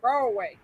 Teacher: They don't even pronounce the D.